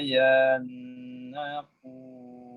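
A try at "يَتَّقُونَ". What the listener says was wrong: Yatta. Titiknya 2 itu. Yattaqun.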